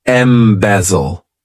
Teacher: has three syllables and the stress is on that second syllable